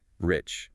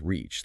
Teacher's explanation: you pull the R hard and keep the vowel sharp and short, rich. If you relax and stretch the vowel, it becomes reach, like extending your arm.